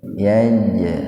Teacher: Kui yaj qalqalah sughra. Jadi huruf jimnya dipantulkan tapi ringan saja.